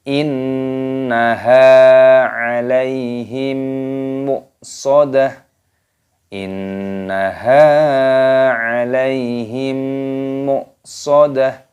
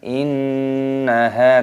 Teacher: Nunnya tasdid, ini didengungkan, ditekan. Innaha, tapi jangan dipanjangkan, tapi didengungkan.